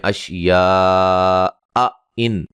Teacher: دو حمزے اکٹھے آ رہے ہیں، اشیا ان، یہ آ ای دونوں کو واضح پڑھنا، کسی کو نرم نہیں کرنا